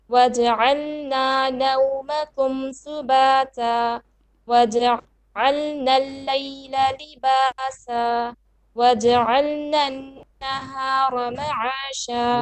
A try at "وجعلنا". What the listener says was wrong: وجعلنا, make your noon shadda more clear to beats at least.